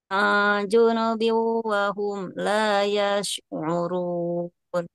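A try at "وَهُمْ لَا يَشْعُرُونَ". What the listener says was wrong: Sudah lumayan yang urun ya. Tinggal dikuatkan lagi saja di huruf ainnya Ummu ya. Tinggal tadi huruf ainnya Ummu ya.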